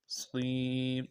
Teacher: صاد یا زیر صی، یا مدہ کو ایک الف دار میں کھینچیں گے